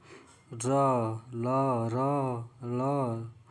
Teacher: र ल बोलेंगे तो आपका दात हल्का सा टच होगा इसीलिए इसको दंत कहा गया